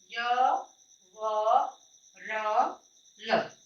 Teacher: अंतस्थ वर्णों का आभ्यंतर प्रयत्न ईसत स्पृष्ट होता है